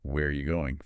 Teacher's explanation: That falling tone signals you expect a detailed answer, not just a yes or no. · for information questions, who, what, where, when, why, how, the pitch usually falls at the end.